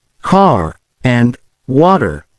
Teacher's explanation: crucial aspects to focus on the r sound unlike British English the American accent emphasizes the R sound even at the end of words · the American accent emphasizes the R sound, even at the end of words. In words like car and water, the R is pronounced clearly.